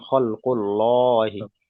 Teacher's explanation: আল্লাহ শব্দের এই যে লাম মুসাদ্দাতের পূর্বে পেশ এসছে, তাই আল্লাহ শব্দটাকে পুর করে পড়তে হবে, কিংবা আল্লাহ শব্দের পূর্বে পেশ এসছে, আল্লাহ শব্দটাকে পুর করে পড়তে হবে, অর্থাৎ আল্লাহ শব্দটাকে ল উচ্চারণ করে পড়তে হবে